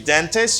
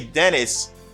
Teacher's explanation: in american english they dropped the t